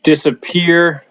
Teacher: Disappear, strong peer at the end there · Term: anapestic